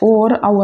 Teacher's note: ये कंठ और ओष्ठ से बोलते हैं, कंठ से बोलते हैं और ओष्ठ से बोलते हैं। तो कंठोष्ठ हो जाएगा, कंठ और ओष्ठ लिख दो भले आप अपन, फिर इसकी संधि हो जाएगी, कंठोष्ठ है।